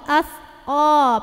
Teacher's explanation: O pangkal lidah naikin. As o, jadi enggak sekedar as ko tapi as o pangkal lidah naik. As o laha. Ha tetap dua harokat.